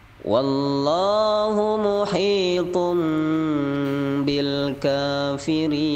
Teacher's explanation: di situ ada tanwin bertemu ba iqlab dan kafirin mad arid lis sukun